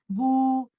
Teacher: آپ نے مخرج کے دو کمپوننٹس جو کہ دو لپس ہیں ان کو علیحدہ کیا اور اپنے لپس کو سرکل کیا تو آپ کے لیٹر با کی ادائیگی ضمہ کے ساتھ پراپر طریقے سے ہوگی.